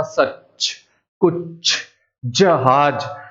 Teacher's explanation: जीभ का जो अगला हिस्सा है वो ऊपर तालू पे लगता है